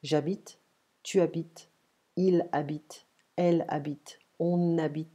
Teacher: The H is ignored in French, we don't pronounce it. And it's like we drop it and we pay attention to the next vowel next to it.